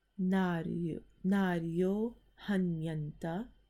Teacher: The visarg in naryaha, that is going to go away. So when a visarg is preceded by an a and followed by an a, that visarg turns into an o while the following a is being elided